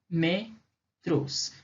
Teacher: a sílaba tônica é o lo, a antepenúltima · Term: proparoxítona